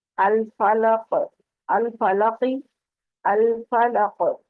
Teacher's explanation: قاف کیونکہ حروف قلقلہ میں سے ہے تو پلٹ کی آواز آئے گی